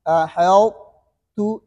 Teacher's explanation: اس میں یہ خیال کرنے کہ ہا کو موٹا نہیں کرنے، ہو ہا کو نہیں موٹا کرنے، ہا کو باریک کرنے، قا کو موٹا کرنے، اور تا کو آخر میں باریک کرنے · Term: قا کی موٹی آواز